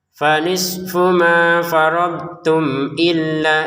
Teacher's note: Illanya dua harakat karena belum gabungi sama Hamzah.